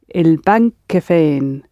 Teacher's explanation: Notice the helping vowel between bank because it ends in two consonant sounds, n, k, and the next word, fein, which begins with another consonant sound, f.